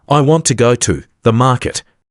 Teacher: We don't stress every word we stress want, go and market. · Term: word stress